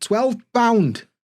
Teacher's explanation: a lot of time we'll drop that plural s especially on things like miles and pounds